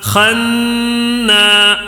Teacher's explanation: یہاں غنہ کرنا ہے نون مشدد کا. نون کے اوپر جب بھی تشدید آ جائے یا میم کے اوپر تشدید آ جائے وہاں پہ غنہ کرنا ہے.